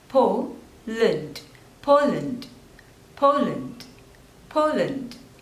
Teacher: there are two syllables and you have to stress on the first one